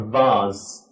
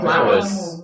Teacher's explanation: So, same mouth position, okay? But one is voiced, one is unvoiced.